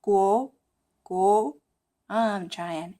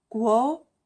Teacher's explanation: that second tone, which is rising